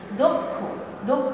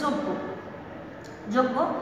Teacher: তবে অ এর উচ্চারণ ও এর মতো হয়ে যাবে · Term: ওকার